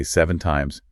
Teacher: If you keep your voice flat and just say 7 times, you are stating a solid fact.